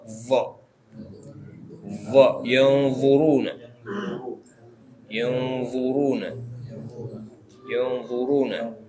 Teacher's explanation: kalau dha itu lidah melebar. Jadi yang nempel bukan bagian depan saja, tapi kanan kirinya juga. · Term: huruf dha